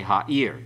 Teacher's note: The accent's on the last syllable.